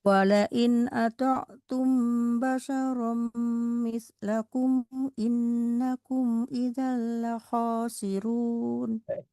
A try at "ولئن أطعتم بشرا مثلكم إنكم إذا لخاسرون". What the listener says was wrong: cukup berkurang dari dengungnya. Nanti dihilangkan ya mandi ya. Inna mislakum in annakum.